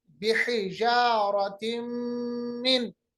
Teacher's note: आवाज को हम थोड़ी देर तक नाक के बांसे में, खैशूम में ले जाते हैं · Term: इदगाम